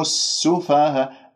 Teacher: لدينا في كلمة السفهاء حرف المد والهمزة في كلمة واحدة، فهنا يكون مد واجب متصل، وأقول السفهاء ولا أقول السفهاء، أملت الألف وتغير الصوت والصوت غير مستساغ، فانتبهوا بارك الله فيكم.